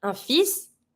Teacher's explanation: You pronounce the S, but you don't pronounce the L.